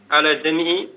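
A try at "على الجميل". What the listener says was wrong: Jamil itu bukan jami'i, alal jamili. Alal jamil ghairil ihtiyari.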